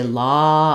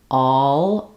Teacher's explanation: It does sound a little different when I say all versus law. When I say law, I'm just open. I can stay rounded. When I'm doing all, I lift and glide into that ol sound.